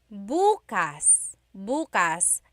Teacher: emphasis is on the first syllable, that means tomorrow.